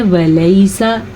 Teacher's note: یہ سٹائل بالکل غلط ہے، اس کو چھوڑ دیں. اصل طریقہ پڑھنے کا ہے ولیسا، سین کو لمبا نہیں کرنا، نہ ہی واو کو لمبا کرنا ہے